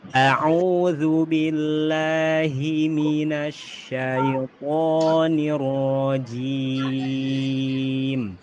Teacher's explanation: Huruf th ditebalkan kemudian huruf ro ditebalkan.